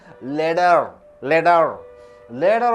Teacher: You call it pronounces letter because after e vubble t comes t is changed into d